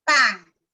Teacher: la pronunciación de las nasales finales como bilabiales